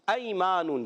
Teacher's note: یا ساکن سے پہلے زبر، یا لین ہوگا، نرمی سے ادا کریں گے